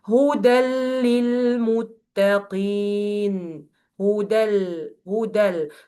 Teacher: Move from dal to lam quickly with giving this dal only one fatha · There is no sound or ghunnah for the noon sakina at the end of the tanween. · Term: complete merging without ghunnah